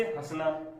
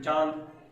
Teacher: उच्चारण मुख और नासिका दोनों से मिलकर निकलता है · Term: अनुनासिक